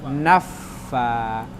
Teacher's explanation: Na-nya tidak dipanjangkan karena depannya langsung fa.